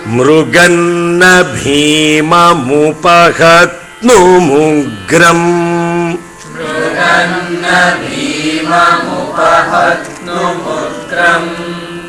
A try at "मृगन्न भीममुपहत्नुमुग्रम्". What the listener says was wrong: Why there is a pause there? Power loss.